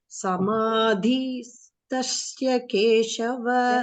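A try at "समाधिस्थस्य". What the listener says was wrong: There is no shakara, huh? So you please don't make sa into sha. Samadhisthasya.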